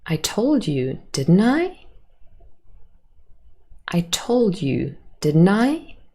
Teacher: Here we have a rising intonation on the question tag. And this is really because the speaker wants to tell you that they're not quite sure, they're unsure, and they want to have confirmation back from you.